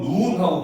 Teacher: 하늘에서 내리는 건 눈하고 길게 얘기하잖아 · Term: 장음